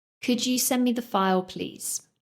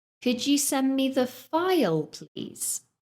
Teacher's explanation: So my voice went up and then down at the end. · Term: rising intonation